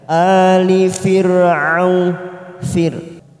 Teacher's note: Kadabi ada hamzah sukun, kada bi ali a fathah berdiri 2 harokat kita panjangkan. Ali fir'au fir ro sukun yang didahului kasroh, kita baca tarkik tipis